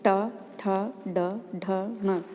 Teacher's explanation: कंठ और तालु के जो बीच का भाग है वो मूर्धा है। मूर्धा से बोले जाने वाले वर्ण हैं ट, ठ, ड, ढ, ण